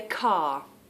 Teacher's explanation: the letter r and the fact that we don't pronounce it